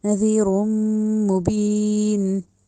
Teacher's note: ناک میں آواز لے کے جانی ہے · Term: غنہ